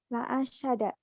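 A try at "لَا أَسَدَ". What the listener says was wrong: Jangan ada tasdid. La asada, la asada.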